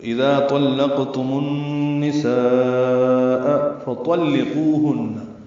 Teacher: طا پر ہے، لام باریک ہے، قاف پر ہے. فطلقوهن قو و مدہ ہے، ہن میں غنہ ہے.